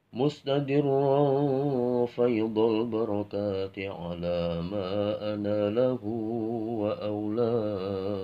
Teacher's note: tadi mustadirrun itu rendah, enggak terlalu naik, kemudian wa usani diawali dengan naik suaranya.